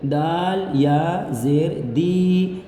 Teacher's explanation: یا ساکن سے پہلے دال کے نیچے زیر ہے، یا مدہ ہوگا، یا مدہ کو ایک الف کے برابر کھینچتے ہیں، لہٰذا اس دال کو ایک الف کھینچیں گے۔